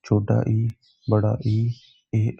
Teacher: जीभ के अगले हिस्से से उच्चारित किए जाते हैं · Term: अग्र स्वर